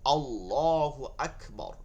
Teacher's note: জবর অথবা পেশ থাকিলে ওই লামকে কোন লামকে যেটা তাজিদ আছে ওই লামকে পূর্বা মোটা করিয়া পড়তে হয়